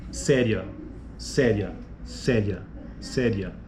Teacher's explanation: Veja que a vogal final ali, né, ria, você tem a vogal, ocorre, né, o ditongo, e você tem a vogal no A e a semivogal no I.